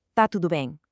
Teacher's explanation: that starting verb, está, loses its opening vowels entirely just for the sake of efficiency, leaving us with a punchy, direct, tá tudo bem.